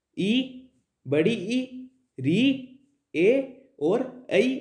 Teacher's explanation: वे स्वर जिनके उच्चारण में जीवा या फिर जीभ का अगला भाग क्रियाशील होता है वे स्वर अग्रस्वर कहलाते हैं। इनके अंदर ई, बड़ी ई, री, ए और ऐ आता है।